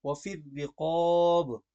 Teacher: وفی الرقاب کی جو را ہے یہ را باریک پڑی جائے گی